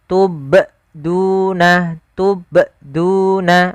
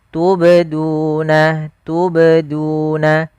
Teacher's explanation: Yang tepat adalah dia huruf qalqalahnya memantul sambil mengalir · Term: qalqalah sughra